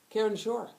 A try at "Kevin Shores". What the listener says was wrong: Shores. Yes, it's plural.